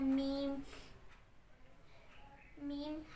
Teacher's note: بند ہونٹوں کے خشک حصے سے ادا ہوتا ہے.